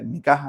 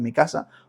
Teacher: Cuando la gente dice, "Mi caja en vez de mi casa, lo que han hecho ha sido bajar la lengua para abajo un par de milímetros y así ya te sale esa aspiración